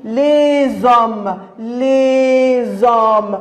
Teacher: Alors, la liaison, c'est quand on lit S, la consonne S, avec le O, ça va donner le son Z.